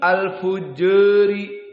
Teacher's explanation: qiraah Wars al-Imalah as-Sugro ataupun at-Taklil turun sedikit sudut elevasinya, namun masih di atas tengah, dinamakan at-Taklil al-Fujari.